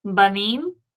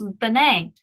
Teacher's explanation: But notice what happens to the kamates that was underneath the bait. It has reduced all the way down to the vocal schwa.